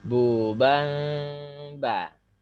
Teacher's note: Jadi dengung itu lebih panjang dari 2 ketuk.